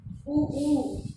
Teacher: हमारे होठ जो है वो गोल हो रहे हैं बोलते समय, ये हो जाएंगे ओष्ठ्य।